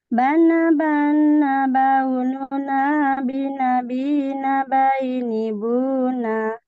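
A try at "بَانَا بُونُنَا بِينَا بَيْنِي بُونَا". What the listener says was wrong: Ini kayak tercampur pola gunnah nih. Bedakan ya. Sekarang coba bacainnya pola mad 2 harokat. Bukan pola gunnah, tapi pola mad 2 harokat.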